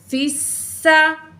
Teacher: फ़ा को सीन से मिलाएंगे तशदीद की वजह से, फ़ा ज़ेर सीन फिस, सीन में सिटी वाली आवाज़ होगी।